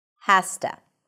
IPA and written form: hæs.tə (has to)